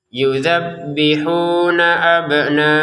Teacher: Yudzabbihuna abna'akum, huruf ba-nya dipantulkan, ya. Abna, ya, di abna harus dipantulkan, jangan sekedar abna gitu, ya.